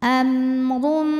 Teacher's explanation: Huruf ra dibunyikan secara tafkhim karena berbaris dhammah tanwin barisnya di atas, maka dibacanya tebal.